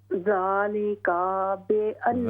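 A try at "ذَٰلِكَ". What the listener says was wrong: ज़ालिका काफ को लंबा न करें, ज़ालिका बिअन्नहुम,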